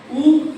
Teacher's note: 2 होते हैं ना, तो दोनों ओष्ठों से जिसका उच्चारण हो ऐसे अक्षर, इसलिए यहाँ द्विवचन में है, 2 ओष्ठ। ठीक है, एक ही ओष्ठ से उच्चारण नहीं होगा, दोनों ओष्ठ मिलकर के उच्चारण होगा